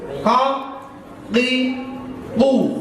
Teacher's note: Dibuka, rasakan pangkal lidah pian itu menempel ke langit-langit bagian belakang